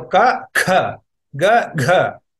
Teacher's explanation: you produce the sound similar to ka and ga, but with more energy, with more aspiration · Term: mahaprana